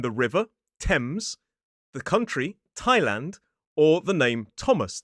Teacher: that th is simply pronounced as a t sound, the same sound we see in a word like talk